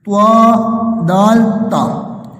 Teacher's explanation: پہلے ہیں طا، دال، تا، یہ زبان کی نوک اور اوپر کے دانتوں کی جڑ سے ادا ہوتے ہیں